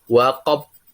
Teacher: Huruf ba ini adalah huruf qalqalah, disebut qalqalah kubra karena ada di terakhir kalimat